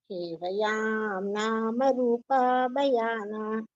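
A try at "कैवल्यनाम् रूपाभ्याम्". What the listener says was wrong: Just a minute. Now we are not reciting this in the right melody. Kevayam rama rupabhyam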